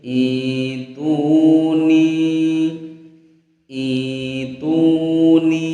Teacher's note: Yang betul atau yang tepat adalah huruf alifnya ini kita baca kasroh ya, kemudian hamzahnya kita ganti dengan huruf ya, sehingga bacanya menjadi ituni, ituni ya, i-nya panjang, ituni, begitu.